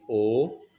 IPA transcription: ɔː